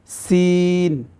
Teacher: এটাও কিন্তু জিহ্বার আগা থেকে উচ্চারণ হবে কিন্তু এটা সামনের যে উপরের দাঁত আছে দুই দাঁতের আগার সঙ্গে লাগাইয়া তারপরে এই উচ্চারণটা করতে হবে